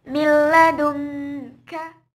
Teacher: idgham bila gunnah atau cara membacanya tanpa dengung